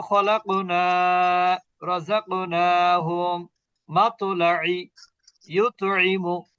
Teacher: কলকলাটা হবে ঠিক, কিন্তু কলকলার মানে লেভেলটা হবে লো ক্লাসের কলকলা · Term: কলকলা তু সুগ্রা